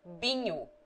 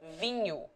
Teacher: In Minho, for example, the people generally say binho instead of vinho